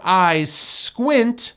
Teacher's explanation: The 2 S's become just one sound.